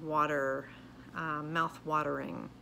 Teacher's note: the t has a little more of a d sound